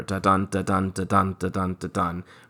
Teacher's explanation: Five beats alternating unstressed stressed syllables. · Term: iambic pentameter